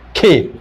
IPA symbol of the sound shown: k